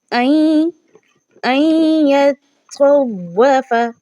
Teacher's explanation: کیونکہ یہاں پر نون ساکنہ کے بعد یا آ چکی ہے اور یا حروف یرملون میں سے ہے، تو اس کی ادائیگی کیسے ہوگی؟ آواز جو ہے نا وہ ادغام کرنے کی صورت میں ناک کے بانسے سے ادا ہوتی ہے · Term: ادغام مع گنہ